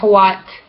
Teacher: Upside down W, voiceless, labial velar, fricative, glide